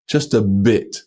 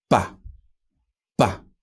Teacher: B, D, and G are unvoiced in Chinese. There's no voice behind them, whereas they are voiced in English.